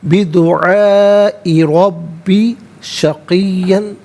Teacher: یہ مد متصل ہے، مد واجب بھی کہتے ہیں، لازم بھی کہتے ہیں۔ منیمم اس کو 3 سے 4 حرکات کی مقدار کھینچ کر پڑھنا ضروری ہے، اور میکسیمم اس کو 5 سے 6 حرکات کی مقدار کھینچ کر پڑھ سکتے ہیں۔